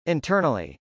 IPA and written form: ˌɪntˈɝnəli (internally)